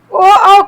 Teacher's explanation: ओ औ का उच्चारण कंठ और ओष्ठ से होगा, कंठ और ओष्ठ से होगा। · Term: कंठोष्ठव